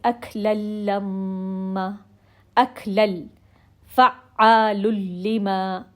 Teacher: اب ادغام کامل ہوگا لام اور را میں، لیکن اس میں غنہ کی ساؤنڈ نہیں ہوگی. مرچ ہو رہا ہے، اس کے اندر مکس ہو رہا ہے، لیکن اب اس میں غنہ بالکل سنائی نہیں دے گا ہمیں.